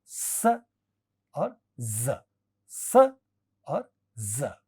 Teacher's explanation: स और ज, स और ज, ये एल्वियोलर फ्रिकेटिव्स हैं